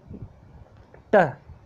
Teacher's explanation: ये प्लोसिव है क्योंकि इसमें भी एकदम से हवा तेज गति से निकल रही है बाहर